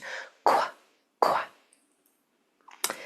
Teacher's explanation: U is silent when it comes after a Q. This Q is going to sound like a silent, voiceless KW. No vocal cords are used.